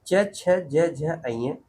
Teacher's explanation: च वर्ग की बात की जाए तो इसका उच्चारण स्थान कहाँ से होता है? तालु से होता है, जिसे तालव्य कहते हैं।